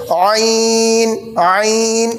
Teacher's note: आइन, आइन, बीच हलक से निकालेंगे